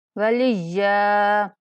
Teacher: یا پہ سختی کریں گے اور 1 سیکنڈ تک لمبا بھی کر کے وقف کریں گے